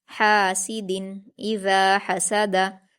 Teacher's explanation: दाल पर तनवीन है और तनवीन के बाद हमजा है जो कि हुरूफ इजहार में से है, इसलिए तनवीन की आवाज़ को जाहिर करके बगैर गुन्ना के जल्दी पढ़ेंगे